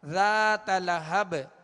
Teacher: ذات لہب، با کو ساکن کر دیا لہذا یہاں قلقلہ ہوگا